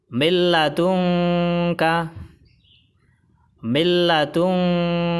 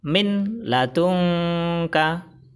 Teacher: Jadi idgham bila gunnah memasukkan tanwin atau nun mati ke salah satu huruf idgham bila gunnah tanpa dengung. Cara baca, tidak ditahan dan tidak didengungkan.